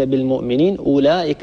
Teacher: مد متصل نمده بمقدار أربع حركات، أربع حركات يعني ضعف المد الطبيعي، لا نبالغ في هذا المد، لا نزيده عن مقداره وعن حده.